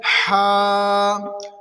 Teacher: ہا کو حلق کے درمیان والے حصے سے ادا کریں گے